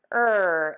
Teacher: for the r sound the back of your tongue is pulled way high up. You have a choice with the tip of your tongue it can be either pointed down or flipped back.